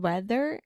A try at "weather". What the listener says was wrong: Your TH is so good, meu amor, but for some reason in the word weather. That's a hard one for you.